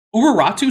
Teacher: even in English, Uraratu starts with a glottal stop. It's just that the glottal stop isn't phonemic in English, so we don't write it, and we just kind of ignore it.